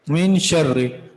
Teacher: तो रा मुशद्ददा मकसूरा, इसको भी हमेशा बारीक पढ़ेंगे।